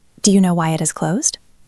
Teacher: You can hear that the polite intro is almost thrown away. It is quick and light. The weight of the sentence falls on the information you want. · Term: glide over the polite phrase